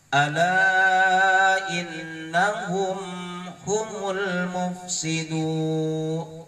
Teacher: Mufsidun dibaca panjang, ada waw mati setelah baris domah. Waw mati setelah baris domah disebut dengan mad tabi'i.